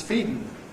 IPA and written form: ˈfiːdn̩ (feeding)